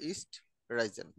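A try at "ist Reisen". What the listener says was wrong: আর আর এর উচ্চারণ কিন্তু ডিফারেন্ট। আচ্ছা, সমস্যা না, যেহেতু এক্সাম দিচ্ছেন আপাতত এটা ফ্যাক্ট না।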